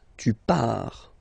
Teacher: So final S not pronounced.